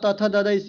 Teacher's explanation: आपका त थ द धद जो पूछे तो इसका कहां से होता है? तो इसका उच्चारण स्थान दंत से होता है